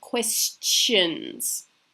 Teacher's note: You can hear a slight t, before it makes a shun. Questions. And it's not so much of a shun.